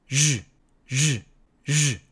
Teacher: 쉬 와 똑같은 방법으로 발음을 하되 유성 음 이기 때문에 목청을 울려서 u 즉 6 처럼 발음을 합니다 그러면 우리말의 즈와 주에 중간